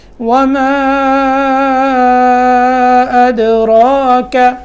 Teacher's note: وَمَا یہاں مد کرنی ہے، ٹھیک ہے. اس کے بعد حمزہ کے بعد دال ہے اور دال میں قلقلہ کرنا ہے. را کے اوپر کھڑا زبر ہے، اس کو پر کرنا ہے یعنی موٹا کرنا ہے.